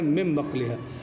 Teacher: نون کو میم پڑھا جائے گا بدل کے، با کی وجہ سے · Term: اقلاب